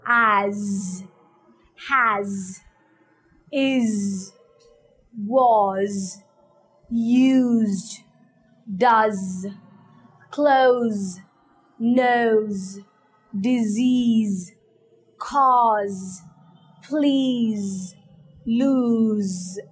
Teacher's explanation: When you pronounce Z, make sure that it's more like the hissing of the bees. You need to feel the vibration here when you pronounce the Z sound.